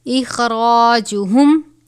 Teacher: خوا کو بھی پر پڑھا جائے گا